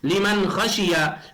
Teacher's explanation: اس لیے نون کی آواز کو ظاہر کر کے بلا غنہ کے جلد پڑھیں گے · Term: اظہار